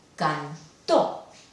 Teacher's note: Si la última llevara la intensidad, sería cantó, y ya significaría otra cosa totalmente. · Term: sílaba tónica